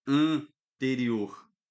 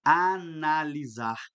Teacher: Ao N aparecendo, analisar. Este N aqui de anterior, ele está me dizendo assim: olha, você deve ler este A de uma maneira nasal